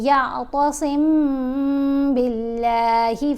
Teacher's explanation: یہاں میم ساکن کے بعد با ہے تو یہاں پر ہم نے غنہ کرنا ہے، آواز ناک میں پڑھی جائے گی اور تھوڑی دیر کے لیے، یعنی ایک الف کی مقدار جتنا یا ایک الف سے تھوڑا سا زیادہ یہاں ہم غنہ کریں گے۔